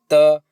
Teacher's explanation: त, दांतों से टच हो रही है त, लेकिन ये भी क्या? कंपन नहीं हो रहा है, इसका मतलब ये कि अघोष व्यंजन है और हवा कम निकल रही है, इसका मतलब अल्प प्राण है।